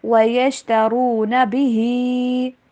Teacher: را کو موٹا پڑھیں اور ہا کی آواز کلیئر ہونی چاہیے